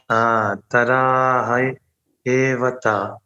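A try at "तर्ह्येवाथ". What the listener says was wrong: Not Tara. Taryevata. No, forget the A. Drop the A. No, Taryevata. Yevata.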